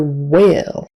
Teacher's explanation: W your lips come together and then I just come open really fast as you're making the the next vowel sound